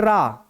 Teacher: क्योंकि रा को बोलते समय जीवा में कंपन होता है, इसीलिए इसको हम एक नाम देते हैं क्या, प्रकंपित